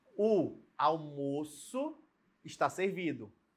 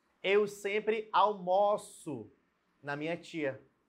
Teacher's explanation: uma vai ter o som fechado almoço almoço fechado e o verbo né Vai estar com som aberto